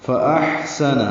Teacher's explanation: حمزہ اقصی حلق سے، حا وسطی حلق سے ادا کریں گے، حا ساکن پہ حمزہ۔